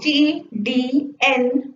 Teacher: Then linguoalveolar, that is the tip of the tongue contacting the anterior part of the palate